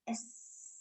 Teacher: the sound of s like s there is no vibration right when we are saying s the vocal cords are nicely open and therefore the air passing over here s and you can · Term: voiceless sounds